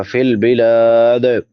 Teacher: دال پہ ساکن ہونے کی وجہ سے قلقلہ ہوگا